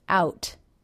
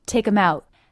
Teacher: makes a stop T on the word out he does not release it · He simply brings his tongue into position for the T, out, cutting off the sound. Take 'em out.